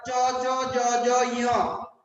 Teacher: সবগুলো তালুতে উচ্চারণ হয়, এই জন্য এগুলোর নাম হলো তালব্য।